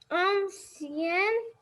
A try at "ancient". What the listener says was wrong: Ancient, it's not Asian, ancient.